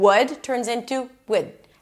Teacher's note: I take out some sounds and I take the vowel and I change it. I reduce it, I lower it, I flatten it, and I shorten it